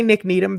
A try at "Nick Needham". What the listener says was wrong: Because you don't pronounce the H. No, you said Needham. You say need ham all the time. Like you need ham. No, it's need him.